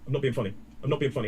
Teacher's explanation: In terms of pronunciation, notice the way I say I'm becomes more like I'm not being funny. And not, we glottalize that.